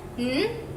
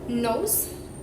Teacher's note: N, as in nose, the tongue touches the alveolar ridge, blocking airflow in the mouth, allowing air to escape through the nose. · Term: nasal